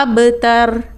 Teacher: با ساکن پر بھی قلقلہ ہوگا، یعنی با کو اس کے مخرج سے تھوڑا سا ہلا کے جنبش کے ساتھ پڑھا جائے گا۔